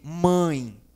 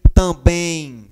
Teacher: ou também é um som fechado um som nasal